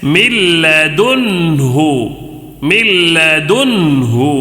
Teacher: اس لیے کہ یہاں پہ اظہار کا قاعدہ ہے، حروف حلقی میں سے نون ساکن کے بعد ہا آیا ہے تو اظہار ہو رہا ہے، تو یہ نون کو ظاہر کر کے جلدی پڑھنا ہے